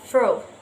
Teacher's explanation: formed by curling the lower lip back and raising it to touch the upper teeth